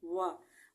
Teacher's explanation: वाव होठों को मुकम्मल गोल करने से वाव अदा होता है, और हरकत के साथ वाव इसका नाम है, और ज़बर के साथ वा।